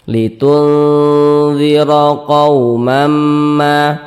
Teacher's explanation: maka kita baca dengan samar Kemudian didengungkan huruf nunnya kita samarkan kemudian kita dengungkan sehingga kita panjangkan litun di bagian tunnya itu kita tahan kita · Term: ikhfa Hakiki